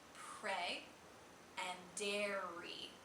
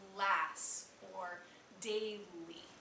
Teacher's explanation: when we make a liquid R sound which is the common R in English you're actually going to bring your tongue close to the top of your mouth but not actually touch